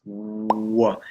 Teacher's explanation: most of the sound here comes from your lips, okay? And you're using your voice.